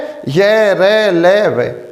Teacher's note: जब हम इनका उच्चारण करेंगे तो हमारी जिह्वा पूरी तरह से मुख के किसी भी अंग को स्पर्श नहीं करेगी, किसी भी भाग को स्पर्श नहीं करेगी। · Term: अंतस्थ व्यंजन